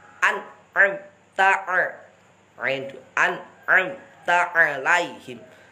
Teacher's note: Ain 2 ini harus dijelaskan ainnya. Jangan berubah menjadi hamzah.